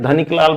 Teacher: यहां भी क में अ शामिल नहीं है, धनिक लाल बोलते हैं, धनिक लाल नहीं बोलते हैं, इसलिए क में क के लिए के साथ ए नहीं देंगे।